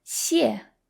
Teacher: The first xie is fourth tone, so it sounds a little angry, 谢. And the second xie is neutral, so it's very soft and there's no stress on it, 谢.